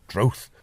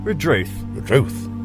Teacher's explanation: When you hear local people say it, the first part, the RE, almost disappears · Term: unstressed first syllable